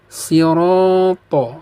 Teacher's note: Ro di sini dibaca panjang, hukum bacaannya adalah mad tha bi'i. Tandanya adalah fathah bertemu dengan alif kecil di depannya.